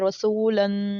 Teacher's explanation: تنوین کی تختی میں میں نے بتایا تھا جیسے رسولن، اب جو دو زبر ہیں اس کے اینڈ پہ ہماری نون کی آواز جا رہی ہے، اور جو نون کی آواز ہے وہ ہم اپنی ناک میں لے کے جا رہے ہیں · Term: غنہ